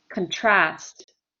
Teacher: if i have the verb contrast contrast is a verb and i put the stress on the second syllable